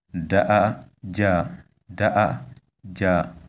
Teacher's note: This word is pronounced da ja, da ja. You can see that on the three first vowels we have high tones